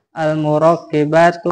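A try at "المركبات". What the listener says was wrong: Al murakkabatu, murakkabat bukan murakkibat.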